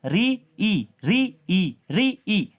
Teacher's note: री में देखने आपकी जीभ ऊपर छत के आगे वाले भाग को टच कर रही है, और ई में पीछे वाले को, तो आगे वाले को टच करेगी, तो री क्या है, मूर्धन्य है।